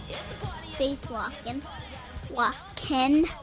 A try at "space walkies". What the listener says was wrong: Not walkin', it's walkies. No! Walkies. Space walkies.